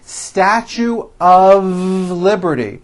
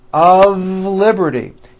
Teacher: even though the word of is spelled with an F we pronounce the word of with a voiced V